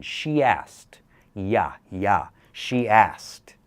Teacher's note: Combine, you can imagine a letter Y in between. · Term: extra sound